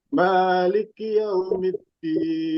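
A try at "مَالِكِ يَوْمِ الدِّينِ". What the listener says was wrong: Nah, ini seperti kesalahan yang awal ya, yang tadi yang atas. Maliki. Seperti ada tasdid ya, Pak. Liki. Liki.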